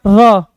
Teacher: जब र का हम उच्चारण करते हैं दोस्त ना, तो हमारी जो जिह्वा होती है झटके से ऊपर की तरफ उठती है। और जो अंदर से हमारे उच्चारण करने पर जो फेफड़े से वायु निकलता है दोस्त ना, उस वायु के संपर्क में जैसे ही हमारी जीभ आती है, जिह्वा आती है, वो लुंठा खा के नीचे लुढ़कते हुए गिरने लगती है। · इसीलिए जब हम र का उच्चारण करते हैं तो बहुत भारी मात्रा में क्या होता है? कंपन। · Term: प्रकंपित